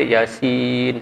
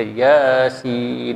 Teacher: Maka ketika tu ya tu kena baca dengan 2 harakat. Jangan baca 1 harakat. Jangan baca Yasin, salah.